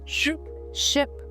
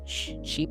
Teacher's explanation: Short and relaxed or long and smiling.